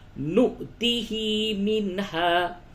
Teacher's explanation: نون ساکن کے بعد ہا ہے، اظہار ہوگا · نو واو کے اوپر حمزہ ہے، اس پہ جھٹکا ہوگا اور ہا کھڑی زد ہی کو تھوڑا کھینچ کر کے پڑھیں گے.